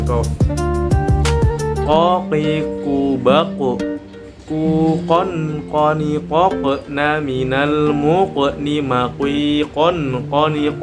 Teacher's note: keluarnya huruf dari pangkal lidah dengan langit-langit [musik] atas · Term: qof